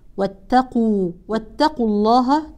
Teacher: الاحكام مرت معنا ننتبه ترقيق التاء وتفخيم القاف واتقوا واتقوا الله تحذف الواو للتخلص من التقاء الساكنين